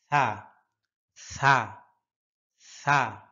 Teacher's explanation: সা জিহ্বার আগাটা উপরের দুই দাঁতের আগার সাথে লাগবে